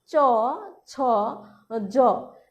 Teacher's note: জিহ্বার মধ্যভাগ শক্ত তালুর কঠিন অংশ স্পর্শ করে যে ধ্বনি উচ্চারিত হয় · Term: তালব্য ধ্বনি